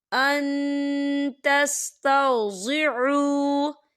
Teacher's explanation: نون ساکن کی آواز کو ناک میں چھپائیں گے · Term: اکفا